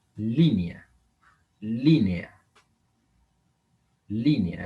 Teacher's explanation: Es una palabra con el acento en la antepenúltima sílaba